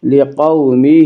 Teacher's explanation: لقومہ، واولین وہ واو جو ساکن ہو اور اس سے پہلے زبر ہو، واولین کو نرم آواز کے ساتھ جلدی پڑھیں گے